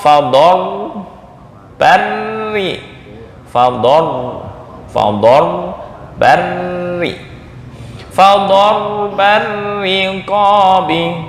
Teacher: Nah, ar-riqabi ini dibaca tarkik tipis. Dorba tafkhim, ar-riqabi tipis.